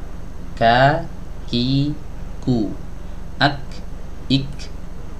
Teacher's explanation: pangkal lidah ini bertemu, menempel di sebuah titik, yang mana titik ini adalah titik pertemuan antara langit-langit keras dan langit-langit yang lunak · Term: makhraj huruf Kaf